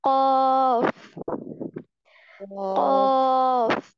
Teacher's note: जुबान की जड़ को कव्वे के मुत्तसिल तालु के साथ लगाकर और क्या करेंगे, मोटी आवाज में पढ़ेंगे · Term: मोटा हर्फ